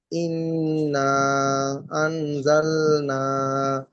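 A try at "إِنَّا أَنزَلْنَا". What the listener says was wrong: এখানে একটু বেশি টান করে মাদের পরে দ্বিতীয় শব্দের মাথায় হামজা এসেছে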